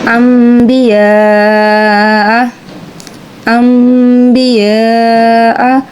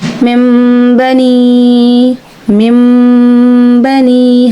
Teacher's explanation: اب یہاں پہ کیا ہے، میم لکھا ہوا ہے چھوٹا سا، ہم اس کی ساؤنڈ کو پڑھیں گے، حالانکہ با آ رہی ہے اور نون ساکن کے بعد با ہے، اور پھر ہم نے اس کو میم کی ساؤنڈ میں چینج کر دیا، تو یہ ہم نے کیا کیا، اقلاب۔